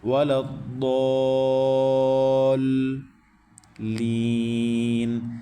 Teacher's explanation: ضاد کو موٹا پڑھیں گے اور 5 الف تک کھینچیں گے، اور 5 الف تک کھینچ کے جب مد کریں گے تو پھر مد کے ساؤنڈ کو آگے لام کی تشدید میں ٹچ کر دیں گے.